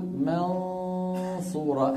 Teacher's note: فلما نقول منصورة، الفم مهيئ على الصاد، لكن النطق لمين؟ النطق للغنة من الخيشوم، والفم مهيئ على مخرج الصاد